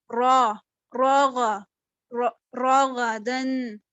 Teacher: جو غین ہے وہ حروف مستعلیہ میں سے ہے تو اس کو پر پڑھنا ہے، را کو بھی پر پڑھنا ہے